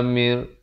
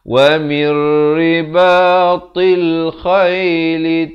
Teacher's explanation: Min quwwatin wa mir. Di sini nun mati bertemu ra, idgham bila gunnah. Mir bukan min lagi dah.